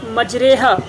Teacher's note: تو جیسا کہ استاد صاحب نے مثال دی تھی مجریحہ، یہ صحیح یہ امالہ ہے، یعنی اس امالہ میں دیکھیے کہ اس لفظ میں مجریحہ یعنی کھڑی زیر کو یا کی طرف اور زیر کی طرف مائل کر کے پڑھا گیا ہے، اور وہ مجریحہ سے مجریحہ، تو یہ وہ امالہ ہے کہ جس کو بعض قرآن نے اختیار کیا ہے، اور یہ اچھا امالہ ہے کہ اس میں امالہ کی اچھی صورت پائی جا رہی ہے، تو یہ جائز ہے۔